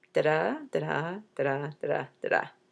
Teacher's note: The name of this pattern is called iambic pentameter, because you have those iams, da-DA, five times